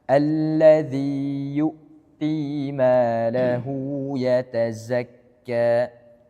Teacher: Ini za-nya, za lebih sofir, ya lebih tajam lagi suaranya. Kemudian hamzah sukun seperti yang tadi Anda katakan, ditekan.